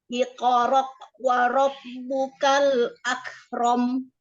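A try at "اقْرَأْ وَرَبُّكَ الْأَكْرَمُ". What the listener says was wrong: Hamzahnya jangan kayak kok seperti qaf sukun. Coba diulang.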